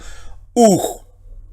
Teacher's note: ambas conforman un solo sonido vocálico que sería U